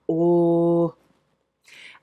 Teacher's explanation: And an O in German is pronounced o. It doesn't have that lovely wavy thing going on that an English O has. German is just very straight up and down.